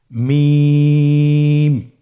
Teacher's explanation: হরফটির উচ্চারণ স্থান দুই ঠোটের শুকন স্থান থেকে উচ্চারিত হয়। এই যে আমরা দুইটি ঠোঁট দেখছি এটা যে শুকন অংশ আসছে সেখান থেকে হরফটি উচ্চারিত হয়। · হ্যা দুই ঠোট চেপে ধরে আমরা উচ্চারণ করব।